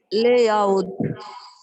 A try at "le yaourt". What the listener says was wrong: Le yaourt. Try focus on your le. It has to be le yaourt.